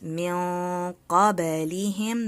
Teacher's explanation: Noon sakina followed by a heavy letter, heavy nasal sound.